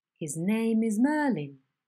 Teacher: This head is one in which the onset and all remaining syllables are uttered on a high level pitch. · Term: high head